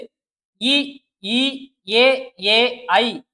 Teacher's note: வாயை திறக்கிறதுனாலயும் நாக்கோட அடி ஓரம் மேல்வாய் பல்லை பொருந்துவதாலும் இந்த அஞ்சு எழுத்துக்களும் பிறக்கின்றன